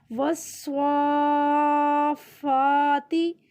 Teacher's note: فا کو زیادہ لمبا نہیں کرنا، صرف صاد کو لمبا کرنا ہے